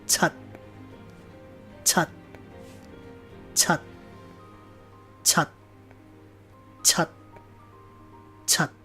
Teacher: the CH sound in Cantonese it's really a TS sound not like the English CH where you round your lips